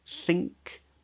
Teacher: back of the tongue comes up for an NG